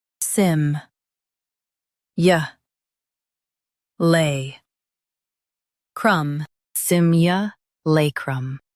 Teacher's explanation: Emphasize lay and soften crum.